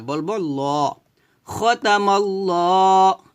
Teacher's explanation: এখানে একটা ল বলতে হবে, কারণ এই যে এ আল্লাহু, এই যে এই লামটা আল্লাহু শব্দের মাঝখানে যে লামটা, এই লামটাকে বলা হয় লফজ আল্লাহর লাম। আর এই লফজ আল্লাহ লামের ডাইনে যদি জবর কিংবা পেশ আসে তাহলে এই লামটাকে ল বলতে হয়, অর্থাৎ মোটা করে পড়তে হয়। খতামাল্লা বলবো না, বলবো ল।